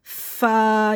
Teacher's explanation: یہ سیٹی حروف صفیریہ یعنی کہ سیٹی کی سے آواز آئے گی اس میں، تو یہ زبان اس کے منہ کے اندر رہے گی اور اس میں زبان ذاکرے سے باہر آئے گی، تو اس میں زبان منہ کے اندر رکھ کے پڑھنے سیٹی کے ساتھ، زا سین صاد منہ بھر کے۔ فا میں ہمس ہوگا، یعنی کہ ہواؤں کی شور کی آواز آئے گی، فا یعنی ہمارے اوپر والے دانت نیچے والے دانتوں کی، ہماری جو اوپر کے جو دانت ہیں نیچے والے ہونٹوں کے شکم میں لگیں گے، تو یہ فا اس طرح ہوگا۔